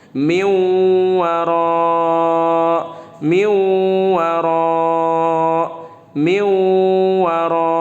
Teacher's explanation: Nunnya dibaca waw, dileburkan ke huruf setelahnya. Huruf setelahnya di sini ada huruf waw.